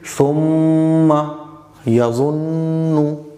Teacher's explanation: کیونکہ نون اور میم پر تشدید ہو تو غنہ ہوگا، تو نون پر بھی تشدید ہے، میم پر بھی تشدید ہے، تو یہاں ہم نون کی اور میم کی آواز کو ناک میں روکیں گے